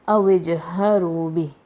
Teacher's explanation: أَوْجْهَرُوا بِهِ, but whenever you pause, make sure to drop the haraka. Careful with the ha, comes from the bottom of your throat.